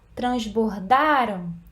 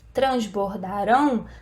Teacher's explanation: Transbordaram, tá na sílaba da. Transbordarão, tá na sílaba rão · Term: sílaba tônica